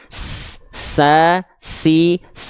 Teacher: huruf sin dia juga punya sifat hams tapi kadarnya mengalir nafas